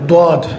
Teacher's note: اب یہاں غور کرنے کی ایک اور بات ہے، بہت سے لوگ غاد کو دواد پڑھتے ہیں، دواد۔ اب دواد پڑھنے کی شکل میں زبان کا اگلا حصہ جو ہے وہ سامنے کے دانتوں کی جڑ کے ساتھ لگتا ہے، جو تا اور دال کا مخرج ہے، تو وہ بھی بجائے اپنے مخرج سے نکلنے کے، تا اور دال کے مخرج سے نکلنے کی وجہ سے سرے سے حرف ہی غلط ہو جاتا ہے۔